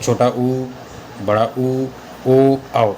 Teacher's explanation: इनको बोलेंगे तो हमारा मुंह गोल आकार में बनता है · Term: वृत्तमुखी स्वर